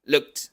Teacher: la D, que por este contexto se pronuncia como T